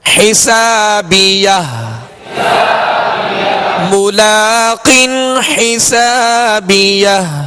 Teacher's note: آخر میں ہا ساکنہ ہے، ہا ساکنہ کی آواز واضح ہو